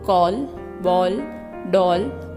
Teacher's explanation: ओ की ध्वनि अंग्रेजी भाषा से आई है। इसका उच्चारण आ और ओ के बीच का है। इसका प्रयोग केवल अंग्रेजी शब्दों के लिए किया जाता है, जैसे कॉल, बॉल, डॉल आदि।